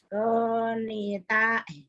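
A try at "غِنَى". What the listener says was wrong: Gina. Barisnya di bawah. Ini Gina bukan Goni atau Gina. Alif wa patah a, alif wa kasroh i, alif wa domah u, a i u. Gin wa kasroh gi, nun wa patah na gina.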